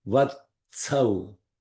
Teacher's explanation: Ta is the dental. Sa is also dental. So both sounds should come from the dental, where the tip of the tongue touches where the edge of the teeth, not the edge means not the end, but the beginning of the teeth, the dental sound.